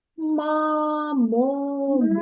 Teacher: якщо ми чуємо [музика] мамомумеми то звук м буде твердий